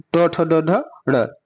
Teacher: तो ट ठ ड ढ ड़, यही आपका मूर्धन्य हो जाएगा